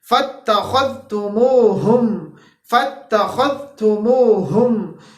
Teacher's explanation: اب یہ خا جو ہے ہمارے پاس ادنا حلق سے ادا ہو رہا ہے، خا ہمارے پاس ادنا حلق سے ادا ہو رہا ہے۔